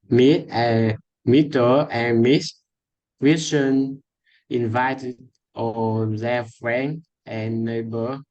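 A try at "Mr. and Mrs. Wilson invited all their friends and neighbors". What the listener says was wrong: Pause a little bit. I've noticed you are not pronouncing your S sound.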